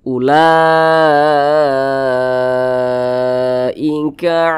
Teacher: mad wajib muttasil itu panjangnya 5 harokat atau kira-kira 5 ketukan.